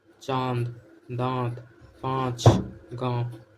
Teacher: जिसमें नाक से कम मुंह से ज्यादा वायु निकलती है। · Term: अनुनासिक